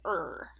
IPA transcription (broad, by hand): əɹ